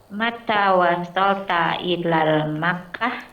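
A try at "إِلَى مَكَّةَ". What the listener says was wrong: Bukan ilal, ila Makkah.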